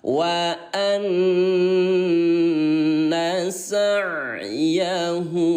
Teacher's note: nun bertasydid tinggal dibaca tahan 2 ketukan